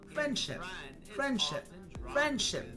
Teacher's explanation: The D sound in friend is often dropped when following ship. So it sounds like friendship. · You can hear how the D sound is not even said. It's not there in a matter of speed.